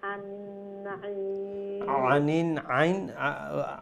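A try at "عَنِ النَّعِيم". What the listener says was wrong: আইনটা আর একটু গলার মধ্যখান থেকে উচ্চারণ করবা ঠিক আছে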